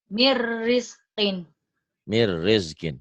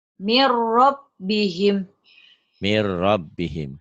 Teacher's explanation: nun mati atau tanwin ketemu ro idgham bila gunnah. Diidghamkan tapi tanpa dengung. Man jadi mar.